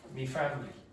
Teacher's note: So Irish people very often, instead of saying my, will say me.